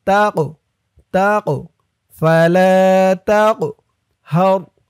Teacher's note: ফাআম্মাল ইয়াতীমা ফালা তাকহার, তা দিয়ে কফ ধরবে। এই কফটা কলকলার হরফ ধাক্কা দিয়ে পড়তে হবে।